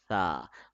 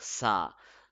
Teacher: the tip of the tongue is touching at the edge of the upper tooth